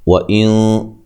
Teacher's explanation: نون ساکن کا اخفا مع الغنہ ہے، موٹا اخفا کرنا ہے